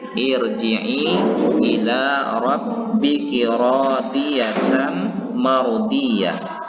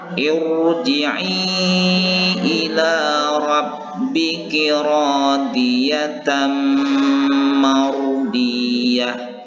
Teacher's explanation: ro yang berbaris sukun ini harus dibaca tafkhim atau tebal